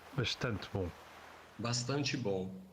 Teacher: In most Brazilian accents, it's s before a voiceless consonant and before a pause.